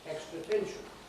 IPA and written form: ˈekstrə ˈtenʃn̩ (extra tension)